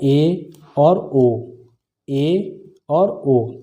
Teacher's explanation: अर्ध समृत, जब मुख द्वार आधा बंद हो तब